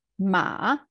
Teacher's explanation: So you see, tone goes up, indicator goes up, and our voice as well. Ma, so it goes down and it goes up again. Ma, falling and rising.